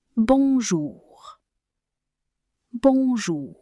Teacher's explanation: It's almost like you're saying an H sound at the end of the word bonjour, but it's a bit harsher than a normal H. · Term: letter R